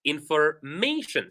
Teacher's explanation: for words that end with shin, we stress the syllable right before shin. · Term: syllable stress